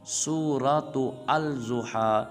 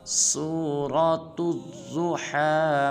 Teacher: سورہ کی تا کو آگے ضاد مشدد کے ساتھ ملائیں گے اور پڑھیں گے سورۃ الضحیٰ مکیہ، بسم اللہ الرحمن الرحیم۔